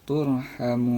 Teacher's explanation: Nah, cara membacanya dibaca panjang 2-6 harakat. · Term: mat arid lisukun